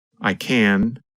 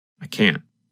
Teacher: when we say the positive form we pronounce the letter N longer the n Sound n n n lasts longer than in the